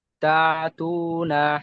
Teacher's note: আইন উচ্চারণ করবেন না, এখানে আইন নেই, হামজা আছে, তাই ঝাটকা দিয়ে পড়তে হবে। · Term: হামজা যুক্ত সাকিন